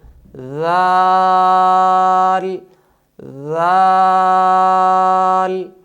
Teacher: Number 2، صفت جہر کی وجہ سے اس حرف کی آواز میں بلندی ہوگی، ذال۔ نمبر 3، صفت رخوت کی وجہ سے اس حرف کو نرمی کے ساتھ ادا کریں گے، ذال ذال۔ نمبر 4، صفت استفعال اور انفتاح کی وجہ سے اس حرف کو خوب باریک ادا کریں گے، ذال ذال۔